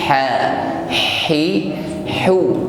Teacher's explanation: Huruf ha sukun, tampak di sini sifat hamas, nafas yang mengalir.